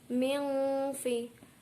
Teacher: nun sukun bertemu huruf fa yaitu ikhfa hakiki, dibaca mendengung